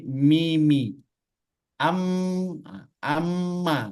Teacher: mim Kenapa disebut dengan Mimi karena makhraj huruf mim itu kemarin yaitu syafatain di antara dua bibir tidak ditekan